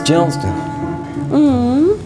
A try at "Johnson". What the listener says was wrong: It's Johnson. Johnson. No T. Johnson.